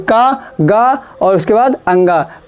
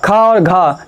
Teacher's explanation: इनसे क्या होती है थोड़ी सांस बाहर आती है, जैसे का गा और उसके बाद अंगा, कम सांस आ रही है। इधर खा और घा देखिए ज़्यादा सांस बाहर आ रही है, तो महाप्राण।